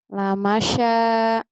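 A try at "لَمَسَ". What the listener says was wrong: Salah. Lah masa? Sinnya sin kecil ya. Lah masa sih? Lah masa?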